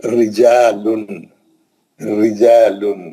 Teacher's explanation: جب بھی را پہ زیر رہے گی ہلکا پڑھنا، اس کو ہلکا پڑھنا. زبر یا پیش رہیں گا منہ بھر کے پڑھنا، پر پڑھنا. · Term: پتلا